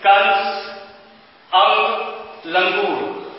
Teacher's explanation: अनुस्वर का जब हम उच्चारण करते हैं तो हवा केवल हमारे नाक से निकलती है, जैसे कंस अंग लंगूर, तो जो नाक का जो प्रयोग हो रहा है वो हमारे नाक से निकल रहा है।